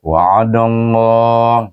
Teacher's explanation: Idgham syamsi kan dal kepada huruf lam dan dibaca tebal, kerana huruf dal berbaris alif atau berbaris waw memang dibaca dengan tebal dengan kalimah Allah itu.